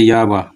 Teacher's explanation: संघर्षहीन व्यंजन उच्चारण में जीवा को संघर्ष नहीं करना पड़ता